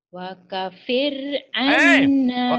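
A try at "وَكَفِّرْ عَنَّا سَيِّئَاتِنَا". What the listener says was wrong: Ada tasdid.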